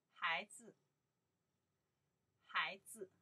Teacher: I pronounce the 孩, the second tone, 子, more light.